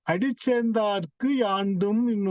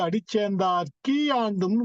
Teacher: அந்த குன்னுடைய ஒரு மாத்திரையில் குறைந்து அரை மாத்திரையாக கீயாக மாறும் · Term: குற்றியல் இகரம்